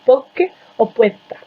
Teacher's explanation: en Cuba, delante de P y de K se asimila o se reduplica